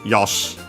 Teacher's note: By the way, the E of, as I pronounced it, Yosh, the E of she can become barely heard if at all because of the preceding unvoiced consonant